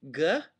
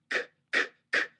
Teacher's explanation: a g in English is a voiced sound that means you can't go g without making an uh sound right you can go C C CK that's a k sound